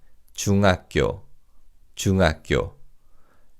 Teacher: in fast speech the he sound in hako almost disappears